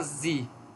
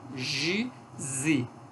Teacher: Despalatalização da consoante constritiva alveolar, sonora.